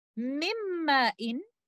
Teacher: They are considered as mutaqariban letters, such as in this example, mimma'in. Noon sakina is completely merged into letter meem. Idgham will be idgham kamil, and the gunna that you hear is from letter meem.